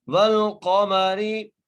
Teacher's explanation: را کے نیچے زیر ہے اس لیے را باریک پڑھی جائے گی. والقمری اذا, زال کو ایک الف مدار کھینچ کے پڑھیں گے.